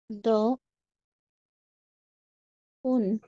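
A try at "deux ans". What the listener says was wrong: হ্যাঁ, এখানে লিয়াজো হয় একটা, হ্যাঁ, দজুন, এই এসটা গিয়ে উনের সাথে অ্যাড হবে, দজুন, হ্যাঁ, দজুন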